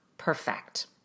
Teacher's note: in the verb perfect, we rush the first syllable and put the emphasis on the second syllable